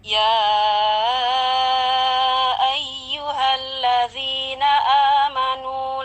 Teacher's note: Kita baca dengan kadar panjang 4 atau 5 harkat. Kemudian ada ya bertasdid, kita baca dengan penekanan yang lebih ya.